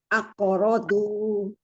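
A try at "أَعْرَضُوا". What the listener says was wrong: Akorodu. Ibu lebih tempelin lagi kanan kirinya, Bu. Jangan sampai yang nempel itu bagian depan, tapi kanan dan kiri lidahnya.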